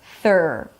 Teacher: You start with the tongue out, and then you need to pull it in to the middle of the mouth.